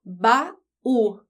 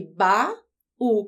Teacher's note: E aí o estudante pode olhar aqui para a palavra baú e pensar assim, bom, baú tem a última sílaba mais forte. A última letra de baú é a letra U.